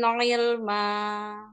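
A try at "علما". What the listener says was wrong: Jangan ile, ile, ilma. Jangan dipantul lamnya.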